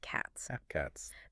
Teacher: the s ending there is pronounced as a voiceless s because it comes after that voiceless consonant T